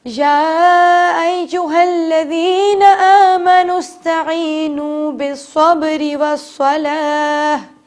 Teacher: ہم کیا کرتے ہیں اکثر آمنو اس وقت استعینوا پڑھ دیتے ہیں، الف کو سین سے ملا دیتے ہیں، جبکہ الف پہ کوئی حرکت نہیں ہے تو الف پر زبر نہیں لگے گا بلکہ نون کو ڈائریکٹ ہم سین سے ملائیں گے